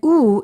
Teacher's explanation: u is a back vowel because the back part of the tongue goes up in the back part of the mouth